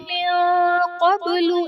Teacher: من قبل میں نون ساکن کے بعد حروف اخفا میں سے قاف آ رہا ہے تو یہاں پر اخفا کا قاعدہ ہوگا، یعنی نون ساکن میں ہم غنہ کر کے پڑھیں گے۔